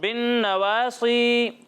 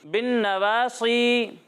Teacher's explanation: یہاں نون میں غنہ کرنا ہے اور صاد کو موٹا کر کے پڑھنا ہے